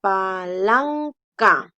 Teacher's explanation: la sílaba tónica es la penúltima